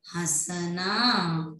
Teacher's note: ठीक है, आगे देखो हां स ना, देखो है के ऊपर चंद्र बिंदु है तो ये अनुनासिक है, मतलब नाक से देखो स और ना, इसमें तो नाक से ध्वनि नहीं आ रही, पर हां हमें तो नाक से ध्वनि आ रही है, मतलब ये अनुनासिक है, तो हाँ स ना, हंसना, क्या बन गया, हंसना।